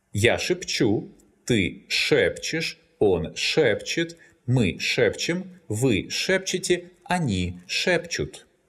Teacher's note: The infinitive шептать is stressed on the last syllable. That's why, in the present tense, this verb has variable stress.